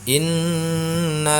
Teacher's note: dibaca berdengung indahnya karena hukum bacaannya adalah ghunnah musyaddah